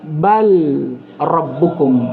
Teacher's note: terdapat juga contoh bal yang diidgham kepada ra